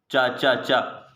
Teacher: चा तालु से निकलता है, चा चा, उच्चारण अल्प प्राण है, अल्प प्राण है, आघोष है।